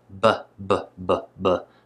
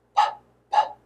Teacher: P, b, p, b, and let air out between them. The difference is that b is voiced and p is voiceless.